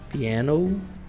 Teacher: o a um pouco mais puxado quase por um som de e mesmo então fica piano Cup and Glass ok Qual que é o